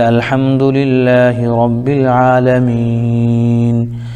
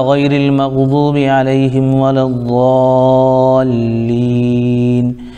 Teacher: وہ مد عارض کہلاتا ہے، اس کی بھی مقدار 2 الف 3 الف ہے